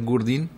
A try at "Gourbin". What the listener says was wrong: Nou, geen Gourdin hoor. Gourbin met een B van Bernard.